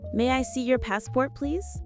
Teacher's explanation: Don't stress your. Native speakers keep it light.